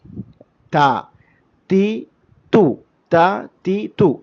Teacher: നാവിന്റെ അറ്റത്തിന്റെ തല തുറഫുൽ ലിസാൻ എന്നൊക്കെ പറയും അറബിയിൽ അത് നമ്മുടെ മേലെ മുൻപല്ലിന്റെ മുരട് മേലെ മുൻപല്ലിന്റെ മുരട് അടിത്തറ അവിടെ കൊണ്ടുപോയി ടച്ച് ചെയ്ത് പറയണം · തീ തുൽ തന്നെ നേരെ മറ്റു ശബ്ദം ബ്ലോക്ക് ആയിരിക്കും അതുകൊണ്ടാണ് അതിനെ ഹംസ് ശ്വാസസഞ്ചാരം സഞ്ചരിക്കുന്നത് കൊണ്ട് തന്നെ ഹംസ് എന്ന സിഫത്ത് പറയും ശബ്ദം ബ്ലോക്ക് ആകുന്നത് കൊണ്ട് ശിദ്ധത്ത്